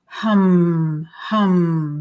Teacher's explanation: we're getting much more buzz on the lips